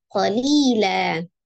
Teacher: Jadi dibacanya menjadi fathah dua harakat ya. Jadi qalilan dibaca qalilan. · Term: mad iwad